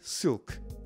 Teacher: Il se prononce comme le L normal, mais un peu plus au fond de la bouche, comme dans le mot anglais silk.